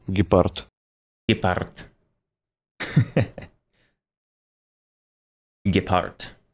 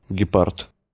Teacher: It's definitely like an unvoiced consonant at the end, right? It's more of a T than a D sound. Gepard. It's kind of like half voiced, like a half voiced consonant.